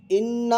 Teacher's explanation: गुन्ने की आवाज़ को नाक में छुपाते हैं, गुन्ने की आवाज़ को नाक में रोक कर पढ़ते हैं।